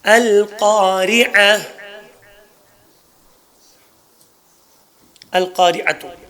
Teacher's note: ایک الف میں تبدیل دو زبر ایک الف میں تبدیل ہوگا اور گول تا ہا میں تبدیل ہوگا